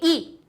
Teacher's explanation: ई निकलने के लिए वायु हमारी तालु से टकराई, तब ई निकली